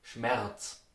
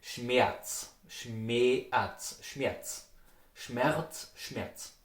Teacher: so the R, it's transformed to an A.